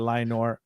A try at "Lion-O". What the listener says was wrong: You said Lionor. There's no R in it.